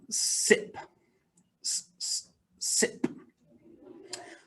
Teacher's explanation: look at the sound first so to make this sound um your tongue sticks all the way forward and it's low down in your mouth and it's right behind your teeth but not touching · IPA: /s/